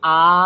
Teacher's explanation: অ এর তুলনায় আ যদি উচ্চারণ করি সময়টাও আমাদের প্রায় দ্বিগুণ লাগছে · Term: দীর্ঘস্বর